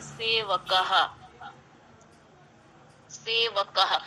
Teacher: क्योंकि अकार है अंत में क के साथ, इसलिए अर्ध हकार अ के साथ बोला गया।